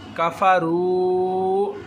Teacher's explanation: واو مدہ ہوگا، ایک الف کے برابر لمبا کر کے پڑھیں گے